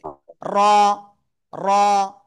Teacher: জিব্বার আগার পিঠ উপরে তালুর সাথে লাগিয়ে এক আলিফ টান হবে